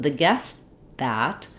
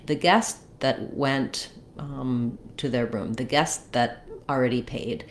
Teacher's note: I'm gonna stop the air to mark the T. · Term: unreleased T